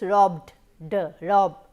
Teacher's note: if the ed is preceded by a voiced consonant sound such as b or bh, it should be pronounced as a voiced consonant d